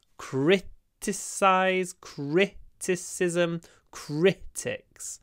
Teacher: the stress is always at the start I think criticize criticism critics always on the first syllable that means always crit open your mouth criticize criticism critics not